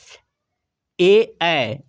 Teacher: ए इसका उच्चारण कंठ तालु से होता है, कंठ तालव्य वर्ण इसलिए कहा जाता है, कंठ और तालु से।